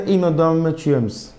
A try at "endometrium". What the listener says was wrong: No, not S. There's no S.